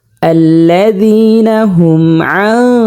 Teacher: নুনে সাকিনের বামে আমরা দেখতে পাচ্ছি সদ আসছে, ইকফার 15 হরফের একটি হরফ সদ। তো এখানে আমরা গুণনার সহিত নাকের ভিতরে লুকায়ে পড়ব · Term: নুনে সাকিনের ইকফা, নুনে সাকিনের ইকফা গুণনা